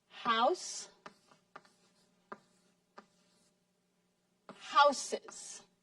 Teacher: end in a silent E an e that you don't pronounce when you add an s to these words you pronounce the E and you make an extra syllable